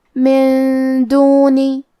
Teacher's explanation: کلمت دونی دال حروف الاخفاء میں سے ہے اور اخفاء کا معنی ہے چھپا دینا. تو ہم یہ نون ساکن کو چھپاتے ہوئے اور غنہ کے ساتھ یہ حکم کو ادا کریں گے